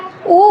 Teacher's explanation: ओष्ठ की आकृति वृत्त के समान हो यानी गोल गोल हो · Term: वृत्ताकार